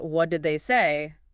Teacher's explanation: Falling intonation on, say, typical information question seeking details.